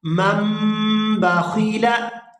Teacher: اب یہاں یہ چیز آپ نے نوٹ کرنی ہے کہ یہ نون کے اوپر آپ چھوٹی میم دیکھ رہے ہیں، نون کے فوراً بعد جب با آ جائے، نون ساکن کے فوراً بعد جب با آ جائے تو وہ نون جو ہے میم کے اندر کنورٹ ہو جاتا ہے، تو یہاں آپ اس نون کو نہیں پڑھیں گے، میم کو پڑھیں گے، میم میم زبر مم، با زبر با، مم با، خا زیر خی، مم باخی، لام زبر لا، مم باخیلا۔